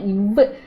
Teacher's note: கீழ் இதழும் மேல்வாய் பல்லும், கீழ் இதழும் மேல்வாய் பல்லும் பிறக்கும் இணைவதால் பிறக்கும் எழுத்து வந்து இவ்வு.